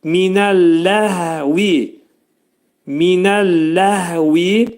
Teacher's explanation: Hə hərfini dedikdə boğazın aşağısından deyirik